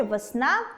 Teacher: звук [Е] наближається у вимові до [И]